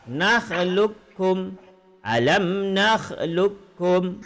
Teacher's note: Qaf bertemu dengan kaf sama qaf hilang masuk ke kaf.